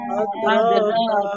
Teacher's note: আদ কলকলা হবে